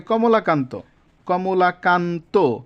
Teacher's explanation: শব্দের শেষে যুক্ত ব্যঞ্জনের অন্ত অ এর উচ্চারণ ও এর মত হবে